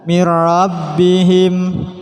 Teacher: Atau dibaca min rabbihim, juga tidak boleh. Ketika nun dilafatkan sudah siap melafatkan ro namun tanpa dengung.